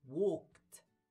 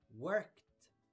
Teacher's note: ايه اخر صوت انا نطقته؟ هو ك، يبقى الاي دي هنقولها ت